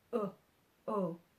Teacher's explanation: o H consonant sounds like Oh Oh like a short Oh still saying oh but it's shorter like you've been cut off